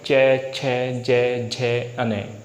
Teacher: यदि हम तालु की बात करें तो तालु में क्या होगा, आपने देखा होगा ये जो दांत हैं हमारे अगले वाले दांत जिस मसूड़े में टच होते हैं ये, ठीक है, तो यहाँ पर जो हमारे अगले दांत हैं ये जीभ हमारी जस्ट दांतों से थोड़ा सा ऊपर स्पर्श करेगी अगले दांतों से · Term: चैवर्ग